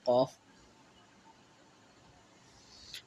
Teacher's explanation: یعنی زبان کی جڑ سے قاف ادا ہوتا ہے